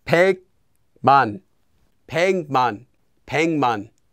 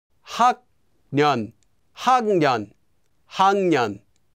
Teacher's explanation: the 기역 will become pronounced as 이응, which is the empty consonant or the 'ng' sound here.